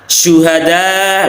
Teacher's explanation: Syuhada, lah ini ada shin yang berharakat dhammah, ini ada sifat yang menempel yang khas, yakni tafasyi, ya, dan kadar tafasyinya paling rendah, yang paling tinggi adalah di saat shin bertasdid, ya.